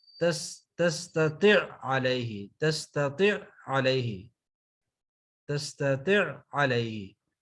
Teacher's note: پہلے عین کو دوسرے عین میں ہم نے مرج کر دیا